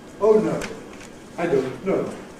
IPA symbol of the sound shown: oʊ